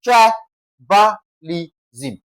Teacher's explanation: We're having tribalism. T R I is stressed.